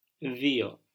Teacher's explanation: So the U in Greek, when it's not in combination, like in AU giving us av or af, or EU giving us ev or f, the U, not in combination by itself, gives us an I sound. So D-U-O, δύο.